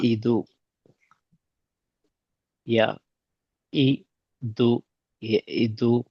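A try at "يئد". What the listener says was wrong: ய இ அல்ல. ய ஐ து யஈது.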